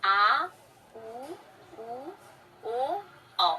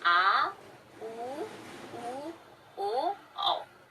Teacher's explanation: देखिए ये जिह्वा का पश्च भाग क्रियाशील रहता है। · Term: पश्च स्वर